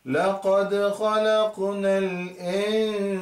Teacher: According to the noon sakin ruling, after the noon sakin seen came, so it is ikhfa. So it is blending the noon and the seen with ghunna, with the melody